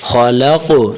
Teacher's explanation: قاف کو موٹا بھی کریں اور تھوڑا سا ہلائیں قلقلہ بھی ساتھ دیں ، خو کو موٹا کریں گے حرف قاف کو بھی موٹا